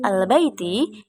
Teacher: hukum bacaannya Al qamariyah karena ada huruf alif lam bertemu dengan huruf ba cara membacanya harus terang dan jelas